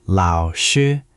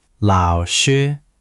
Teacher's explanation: For lao, it's a third tone, that [music] dipping V shape again. And shi is a first tone, high and flat, like you're singing a high note.